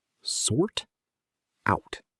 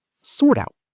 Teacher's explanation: The consonant sound at the end links right into the vowel of the preposition.